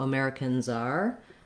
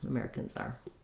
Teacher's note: when we say Americans, then that letter S has a Z sound. So Americans are, we link that together and you can hear that Z, Americans are.